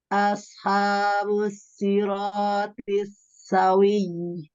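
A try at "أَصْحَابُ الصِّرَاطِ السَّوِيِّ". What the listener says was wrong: Jadi suaranya tuh putus-putus. Ashabus siratis sawi.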